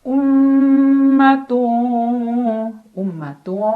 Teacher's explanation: jelas tilka Um ada gunah musyaddadah karena ada mim yang bertasdid cara bacanya mim dibunyikan dengan dengung ditahan kurang lebih dua harakat